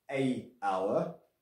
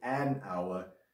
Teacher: And the reason we use an is because the H is silent and it sounds like you are starting with a vowel